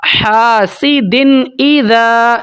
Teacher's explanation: تنوین کے بعد حروف حلقی میں سے حمزہ آ گئی ہے تو کسی قسم کا اخفا یا غنہ یا ہولڈ نہیں کیا جائے گا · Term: اظہار